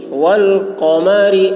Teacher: قاف کی آواز موٹی ہوگی. والقمر را باریک.